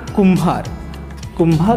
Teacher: नक्कीच गा आणि त पटकन उच्चार होतो म्हणून ल आता कुंभार कुंभार मध्ये कु लघु जरी असला तरी वर बिंदी आहे अनुस्वार आहे उच्चाराला वेळ लागतो म्हणून गा भारा आहे उच्चाराला वेळ लागतो म्हणून गा आणि र